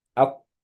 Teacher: So you're not pronouncing the lam whatsoever. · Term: idgham lam al-shamsiyya